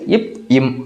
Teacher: இப்போ இப் இம், நீங்கள் 2 லிப்ஸை, இது மேல் உதடு, இது கீழே உதடுன்னு வச்சுக்கோங்க. 2 லிப்ஸு க்ளோஸ் பண்ணுறப்பயே நமக்கு இப் இம் அப்படின்ற எழுத்துக்கள் பிறக்குது